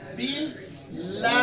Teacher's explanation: गोया के जेर की वजह से लाम बारीक पढ़ा जा रहा है। اور لام کی وجہ سے الف، تو الف پور باریک پڑا جا رہا ہے لام کے باریک ہونے کی وجہ سے، اللہ کا لام باریک پڑا جا رہا ہے.